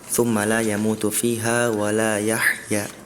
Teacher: Tadi fiha wala yahya itu ha besar sama ha kecilnya kurang terdengar perbedaannya.